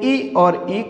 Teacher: ई और ई कहाँ से उच्चारित होता है, तो तालु के द्वारा उच्चारित होता है